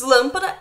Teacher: proparoxítona é quando a antepenúltima sílaba é a mais forte